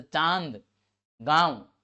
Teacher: मुख्यतः अनुस्वार जो है वो पूर्णतः कहां से होगा, नाक से होगा, लेकिन अनुनासिक जो होगा मुंह और नाक दोनों से होता है।